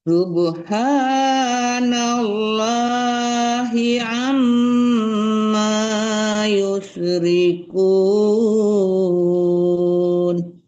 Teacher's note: mim tasdid itu guna artinya dengung ya. Ya paling kurang 2 harkat lah mendengungkan huruf ya, paling sedikit ya, paling maksimalnya 4 harkat, paling minimnya 2 harkat.